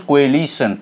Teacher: It is a trisyllabic word, and its primary stress is on second syllable. Second, this second syllable gets stress upon, okay, L.